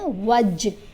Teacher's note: यहाँ देखें, जीम के ऊपर हमने कलकला किया, वज, जीम की आवाज़ को हिलाकर पढ़ना